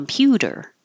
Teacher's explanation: that t changes to a d